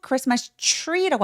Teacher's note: T하고 R이 있을 때는 추로 발음하거든요